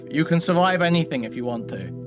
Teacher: a chronic user of the low Riz voice and vocal fry